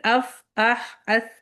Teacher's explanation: ہمس جو ہے وہ ایئر لیٹر ہے، ہمس میں یعنی وسپرنگ ہے اس کا مطلب، اور جو ہے جہر لیٹر جو ہوتے ہیں اس میں وائس کا استعمال ہوتا ہے، اس میں طاقت ہوتی ہے، آپ کو سینے میں پریشر فیل ہونا چاہیے۔ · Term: حروف محموسہ